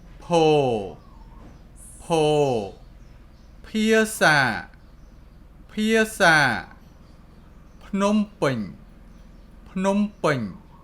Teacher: Po has aspiration sound P.